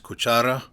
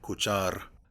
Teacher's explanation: the stress vowel is lengthened and the final unstressed vowel is dropped